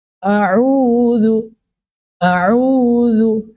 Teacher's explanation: Tempat keluarnya huruf ain itu ada di tenggorokan tengah kita.